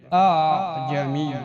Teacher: اس کا دوسرا حمزہ مسہلہ تثقیل سے ہے، اور تثقیل نرمی کو کہتے ہیں، یعنی نہ پورا حمزہ ادا کرنا اور نہ بالکل الف، بلکہ دونوں کے درمیان سے ادا کرنا